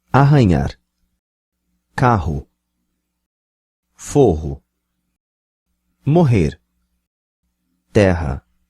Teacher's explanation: the intervocalic double R is pronounced ha